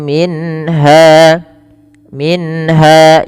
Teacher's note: Jelaskan suara nunnya ketika bertemu dengan ha karena ia izhar halq